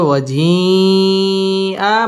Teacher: ওয়াজিআ মধ্যে মুত্তাসিল চার আলিফ টেনে পড়তে হবে